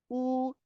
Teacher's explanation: होठ थोड़े से बाहर निकलते हैं और गोल हो जाते हैं · इन्हीं दो खाली हिस्सों से निकलती है जुबान का पिछला हिस्सा पिछला हिस्सा जुबान का थोड़ा सा बुलंद होता है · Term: वाव, वाओ